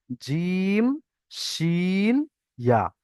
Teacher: জিভের মাঝখান কোনটা আপনারা সবাই জানেন, ওই জায়গাটা তার বরাবর উপরের তালুর সঙ্গে টাচ হবে, লেগে উচ্চারণ হবে জিম, শিন, ইয়া।